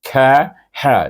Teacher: Dua-dua hamas. Kaf hamas, ha pun hamas.